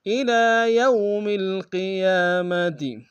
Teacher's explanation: اور قیام قوف کو موٹا ادا کریں گے